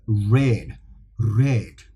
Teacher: Now the example is I can give you the R sound where I actually let my tongue go against the palate